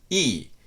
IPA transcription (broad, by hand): iː